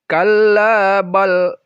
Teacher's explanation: balrona dia dibaca izhar atau jelas dan diberhentikan sebentar. Ini disebut dengan saktah atau berhenti.